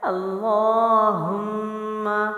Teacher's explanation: ہم جو ہاں سینے سے ہے یعنی وزن کے ساتھ، میم مشدد ہے اور میم مشدد کا غنہ لازمی ہوتا ہے، یعنی جس میم پر قرآن میں ہمیں تشدید ہو اس کو ہمیشہ غنے سے پڑھتے ہیں۔ تو ہاں کو میم سے ملا دیں گے اور ایک الف کا غنہ یعنی ایک مد کے برابر غنہ کریں گے